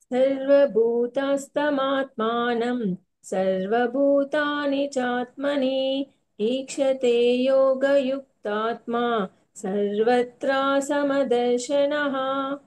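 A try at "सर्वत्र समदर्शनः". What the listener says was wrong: సర్వత్ర అంతే దీర్ఘం లే. సర్వత్ర సమదర్శనః.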